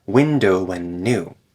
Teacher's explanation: after the D gets removed the two n sounds get connected